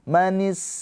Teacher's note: Hames itu mengalir nafasnya.